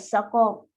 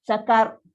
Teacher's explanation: Sa nipis, qaf tebal. Saqar. Ra dia bunyi kan sebab dia punya takrir tu.